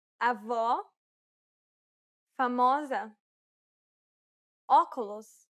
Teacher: This is identical to the O in the word hot. This sound is known as the open O sound in Portuguese.